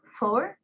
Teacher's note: Air is forced through the upper teeth and lower lips. It becomes labiodentals.